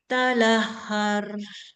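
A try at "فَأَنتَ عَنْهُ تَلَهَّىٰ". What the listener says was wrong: Talaha. Nah, yang ini bukan ro ya. Nah, ini bukan ro nih. Ini maksudnya alif. Cuman ditulis ya. Kalau dalam bahasa tajwidnya kita sebut alif maqsurah. Nah, maksudnya ditulis ya, tapi dibaca alif gitu. Nah, jadinya talaha.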